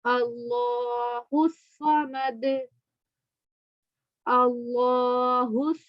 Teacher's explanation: अल्लाह को मोटा पढ़ेंगे और स्वाद को भी मोटा पढ़ेंगे, और एंड में दाल पे कलकला करेंगे